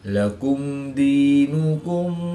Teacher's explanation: میم ساکن کے بعد حرف با اور میم کے علاوہ حرف دال ہے تو یہاں پر اظہار شفوی ہوگا یعنی غنہ نہیں کریں گے بلکہ میم ساکن کو ظاہر کر کے پڑھیں گے